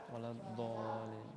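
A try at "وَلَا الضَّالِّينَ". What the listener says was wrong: Ini jadi walad dolin. Walad dolin.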